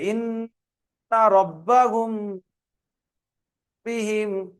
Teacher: মিম সাকিনের পরে বা এলে ইকফায়ে স্বাভাবিক একালিক পরিমাণ গুণনা করে পড়তে হবে